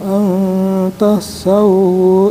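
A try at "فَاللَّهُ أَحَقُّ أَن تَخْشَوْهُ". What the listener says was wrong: Sin sama sin besar ya. Fallahu ahaqqu an sin besar. Fallahu ahaqqu an takhshawhu in kuntum mu'minin.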